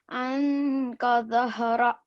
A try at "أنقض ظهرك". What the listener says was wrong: You keep joining these two words, but recite them separately, okay? أنقذ ظهرك. Can you say it like that?